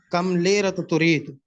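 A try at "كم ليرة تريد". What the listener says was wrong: کم لیرہ تو نہیں, بس لیکن پہلی بات ہے کہ لام کو دے رہے, یہ لام کو زبر نہیں, اور اس کو وقف کیا کریں. کم لیرہ ترید. یوں بولتے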